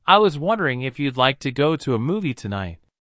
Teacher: notice how the question goes up at the end which shows that he is not overly confident sure I'd love